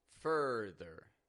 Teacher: Fur, stressed, rising in tone, ther. Flat and quick and quiet in tone, just like all ER word endings